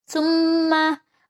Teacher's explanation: mim tasdid atau nun ditasdid dia adalah gunnah. Jadi dia harus ada agak tekanan.